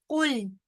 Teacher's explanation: أعوذ بالله من الشيطان الرجيم بسم الله الرحمن الرحيم قل قل काफ जो है वो हरूफ मुस्तालिया में से है, लिहाजा मोटा पढ़ा जाएगा। लाम आगे साकिन है, लाम बारीक पढ़ा जाएगा